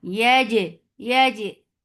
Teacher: Yaj, yeah is light for fatha upon jaws attached. Jim, Jim will get sifa of qalqala, and the breath should not flow at all. Yaj, Yaj, very majhura letter, majhura letter.